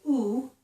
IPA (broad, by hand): u